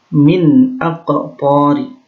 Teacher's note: nun sukun bertemu dengan hamzah. Ini namanya idhar halqi, ya. Cara membacanya adalah jelas.